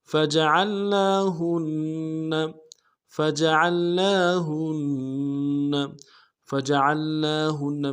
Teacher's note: عین کو لام کے ساتھ ملائیں گے، عین کو موٹا کرتے ہوئے ملائیں گے